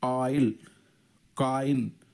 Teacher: ఓ ఐ ఉంది, ఆయిల్, కాయిన్, ఆ ఈ రెండు వస్తున్నాయి